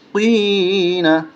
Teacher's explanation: دو نقطے والا قوف جب بھی آتا ہے تو اس کو موٹا کر کے ہی پڑھا جاتا ہے